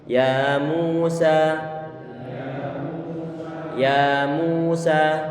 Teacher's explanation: Ya kita buka dengan datar tanpa monyong, kemudian mu kita monyongkan, sa kita buat datar kembali dan dalam keadaan terbuka. · Baik yang bacaan ya ataupun mu ataupun sa, ini masing-masing 2 harokat. Karena semuanya adalah bacaan matabi'i.